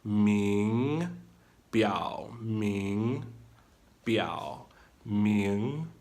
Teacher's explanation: your second tone is rising